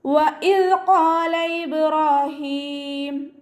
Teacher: വാവ് ഉച്ചരിക്കുന്ന സമയത്ത് ചുണ്ടുകളെ ഒന്ന് വട്ടത്തിൽ പിടിച്ചിട്ട് ഉച്ചരിക്കാൻ ശ്രദ്ധിക്കുക. പല്ലിനെ ചുണ്ടിൽ തട്ടിക്കാതെ നോക്കുക കേട്ടോ.